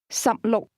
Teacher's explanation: 16 is pronounced with two low-level tones.